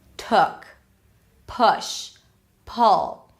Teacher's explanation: Lips are not really rounded. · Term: relaxed